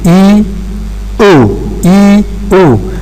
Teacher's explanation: for the production of U, it's the back of your tongue which is raised here. Therefore, there is a difference, in terms of two different positions between E and U.